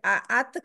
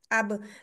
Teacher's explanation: जब तक मैं अपनी जुबान को पीछे नहीं हटाऊंगी वो दो दांतों के मसूड़ों से तब तक ना आवाज ना हवा ना कुछ बाहर नहीं आएगा